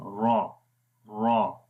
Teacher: را کو موٹا پڑھیں گے کیونکہ را کے اوپر زبر ہے، جب را کے اوپر زبر آئے اس کو موٹا پڑھیں گے، اس لیے را گرین ہے.